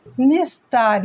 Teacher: निह plus तार, निह plus तार, अब ये जो है ये निस्तार, यहाँ पर भी विसर्ग जो है वो दंत सा में परिवर्तित हो गया